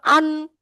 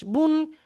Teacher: প্রত্যেকটা অক্ষর কিন্তু দেখেন নাক থেকে আওয়াজটা আসছে